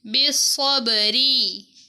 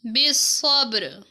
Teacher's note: را کو باریک پڑھا ہے کیونکہ را کے نیچے زیر ہے۔